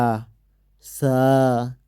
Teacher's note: সা হরফটি উপরের দাঁতের সঙ্গে জিহ্বাটাকে লাগিয়ে হালকাভাবে উচ্চারণ করতে হবে